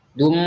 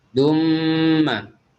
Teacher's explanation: tanwin bertemu dengan huruf mim di gunnah atau dikedengungkan, yaitu standarnya gunnah atau idgham bi gunnah itu jangan terlalu melekat bibir kita, tidak boleh dum ya, tapi dumma.